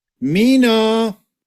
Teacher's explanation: The prominent part moved to the first syllable.